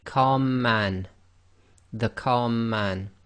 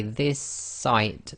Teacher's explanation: It's effectively the merging of two sounds into one sound, and you sort of hold it for a little bit longer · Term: gemination